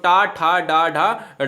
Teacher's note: कंठ से ऊपर वाले स्थान के मूर्धा में चले जाते हैं, तो वो है टा वर्ग वाले। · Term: मूर्धा वाले